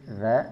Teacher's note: dari segi suara dia bersifat rakhawah tekanannya tidak begitu kuat bahkan terkesan mengalir begitu saja